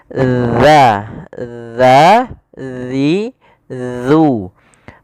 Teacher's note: Yang mana huruf zal ini makhrajnya adalah ujung lidah kita, ujung lidah. Ya, kita ujung lidah bertemu dengan gigi sari atas